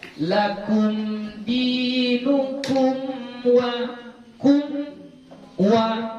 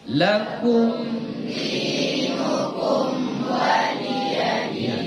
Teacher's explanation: Karena mim dengan waw dia satu makhraj. Di mana? Di bibir, sama-sama di bibir. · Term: izharnya